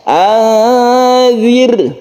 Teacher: ro ini ro yang sebelumnya ada kasrah maka dibaca tipis atau tarqq caranya yaitu bibir kita dikebawahkan Anir tipis tipiskan ya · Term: tipis atau tarqiq